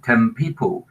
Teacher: the second sound in this case the bilabial influences the previous sound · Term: regressive